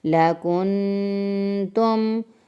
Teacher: نون ساکن کے بعد حروف ہلکی کے علاوہ کوئی اور حرف ہے یعنی کہ تا ہے تو ہمیں غنہ کرنا ہے